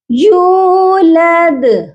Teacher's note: یا واو پیش یو کھینچ کر پڑھنا ہے 2 سیکنڈ تک